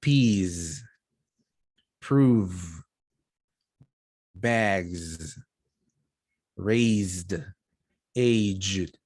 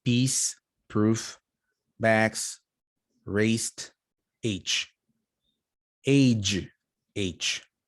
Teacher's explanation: vowel is longer like for example peas prove bags raised aged when we have consonants that are voiced like z z we elongate the vowel sound